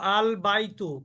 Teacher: বা টা হলো কমারি অক্ষর ওই জন্য লামটা উচ্চারিত হলো